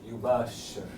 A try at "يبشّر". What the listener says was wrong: No, not yubashir. That's with an alif. Yubashir. Aywa, yubashir. I'm not hearing a sheen. Do you hear a shadda on that sheen? Exaggerate these consonants with shaddas on them. Just exaggerate them. Make them 3 times as long as normal. And that will start training you to hear them.